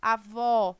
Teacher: a sílaba tônica é a última sílaba vó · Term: oxítona